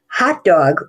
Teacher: hot dog with the big primary stress in the first syllable and the tertiary stress of the second syllable that's a compound word